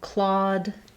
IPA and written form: klɔd (Claude)